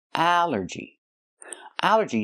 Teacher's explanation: It's 3 syllables. Allergy. The stress is on the first syllable.